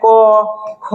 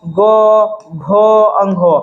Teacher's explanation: क ख में आपका इतना झंकार का ध्वनि उत्पन्न नहीं होता है जितना कि आपका ग घ अंघ में होता है